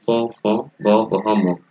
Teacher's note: এই প, ফ, ব, ভ, ম এই ধ্বনিগুলো উচ্চারণের সময় দুইটা ঠোঁটের ব্যবহার হয়, অর্থাৎ দুইটা ঠোঁটের সংস্পর্শে বা সাহায্যে এই বর্ণগুলো উচ্চারিত হয়। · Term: দ্বিউষ্ট ব্যঞ্জন ধ্বনি